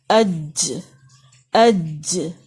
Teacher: زبر حمزہ زبر اور ساتھ میں لیٹر ساکن کر کے، جیسے آپ کے سامنے لکھا ہوا ہے اج. ج بولتے ہوئے آپ دیکھیں گے کہ آپ کی زبان کا درمیانی حصہ ایگزیکٹ اوپر لگ رہا ہے تالو کے ساتھ. اج اج. اش اش اش.